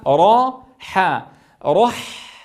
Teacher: حا رح انظروا كيف انتقل من الراء المفخمه الى الحاء المرققه واعطي الحاء حقها من الزمن لانها رخوه مع بيان ما فيها من الهمس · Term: الحاء المرققة